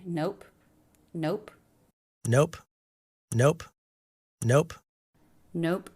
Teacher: Nope with the O diphthong O. Make sure you get some lip rounding there.